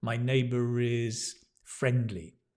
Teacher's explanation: even in British English we pronounce the r if it links with a vowel